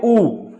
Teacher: ऊ मैं बोलिया तां इह साडे होंठ काफी नेड़े आ गए, गोल आकृति होगी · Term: गोलाईदार स्वर